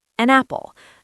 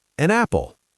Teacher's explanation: The N sound slides right into the A sound. It sounds like one long word. An apple. Yes, that sounds so much smoother. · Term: connected speech